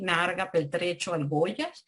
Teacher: rasgos caracterizadores del español de Venezuela, como la neutralización RL